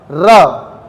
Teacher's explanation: भले लहरा रही है मेरी जीभ पर टच किसको करेगी? मसूड़ों को। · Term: वत्स व्यंजन